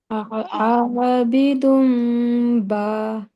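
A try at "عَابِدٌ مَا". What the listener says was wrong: नहीं, बा नहीं, मा। आबिदुम मा। मीम के ऊपर 2 हरकत पर गुन्ना करेंगे। तुम 2 हरकत तक जाना चाहिए। आबिदुम मा।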